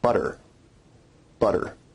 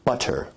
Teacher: Now notice where we write it with two T's in English that your tongue is producing a tap sound there rather than a full stop or plosive sound